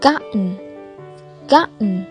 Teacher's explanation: Khi TN đứng cạnh nhau thì T câm, còn N đọc bình thường. · Ở đây T đứng cạnh N nên là T câm, nên chúng ta đọc là gotten.